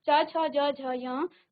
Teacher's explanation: हमारे तालु को स्पर्श कर रही है हमारी जीभ मुख के अंदर